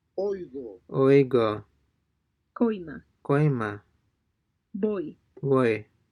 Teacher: unlike the OY in the word boy, this is a shorter sound. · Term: Diphthong Oi